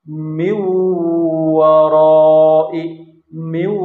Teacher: contoh selanjutnya nun mati bertemu dengan huruf w mi mi ya nunnya lebur ke dalam huruf wau jadi seolah-olah tidak ada tapi dibarengi dengan dengung